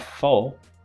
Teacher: So there is no vowel, there is a syllabic consonant. So in that case, it becomes a nucleus.